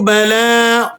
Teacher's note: لام پر کھڑا زبر ہے اور کھڑا زبر بھی یہ الف مدہ کے قائم مقام ہوتا ہے، اسے بھی آپ نے 1-2 سیکنڈ کھینچ کر پڑھنا ہوتا ہے